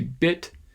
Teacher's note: release that final stop sound you could say bit and maybe you can hear that little puff of air at the end of the t bit or i can sort of swallow that t without releasing